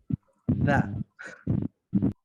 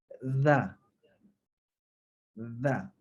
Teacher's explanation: Kalau kita sebut Z biasa, dia kurang tepat. Dia kena keluar sedikit lidah. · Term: Huruf zal